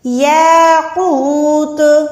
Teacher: الف سے پہلے اگر خالی الف سے پہلے زبر آتی ہے تو ہم اس کو ملا کے لمبا کر کے ادا کرتے ہیں۔ یاقوت، قوف موٹا ہے، قوف موٹا حروف ہے، حروف مستعلیہ میں آتا ہے۔